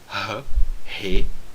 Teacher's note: O Re vem do fundo da garganta, aquele som do R em rato, Re, tá certo?